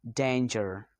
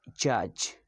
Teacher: according to places of articulations, the J sound is post-alveolar sound. And according to manner of articulations, the J is affricate. The J sound is voiced. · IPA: /dʒ/